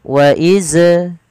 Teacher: Perhatikan ketika kita melafalkan wa idz qala Musa, pelafal zalnya wa iz, bunyikan huruf zalnya iz dan tidak memantul. Wa iz, hati-hati jangan sampai memantul.